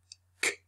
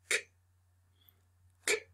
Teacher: blocking the air and sound and releasing it by moving the tongue downward